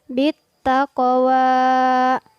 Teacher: ada huruf qaf yang bersukun maka kita terapkan hukum bacaan Qalqalah bit taqwa kita pantulkan huruf-hurufnya Arai Taemin kazaba watawalla yang perlu